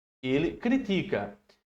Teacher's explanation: Ele critica né é o Ti a sílaba forte